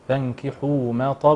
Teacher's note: الطاء في اعلى مراتب التفخيم